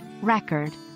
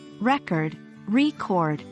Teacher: record with stress on the first syllable is a noun meaning a piece of data or information stored but when we say record record stressing the second syllable it becomes a verb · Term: stress shift